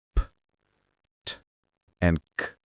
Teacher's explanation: These are all voiceless sounds, which means your vocal cords don't vibrate when you say them. You only use air.